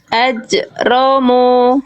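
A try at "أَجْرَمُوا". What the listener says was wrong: Sip, ini pantulannya udah bagus. Cuman kesalahan berikutnya yang juga harus dijaga adalah ketika dipantulkan, suara pantulannya jangan sampai tertahan. Jangan dibaca gini. Ajromu, tapi lempar aja, lepas aja pantulannya Bunda. Ajromu, ajro, bukan ajro.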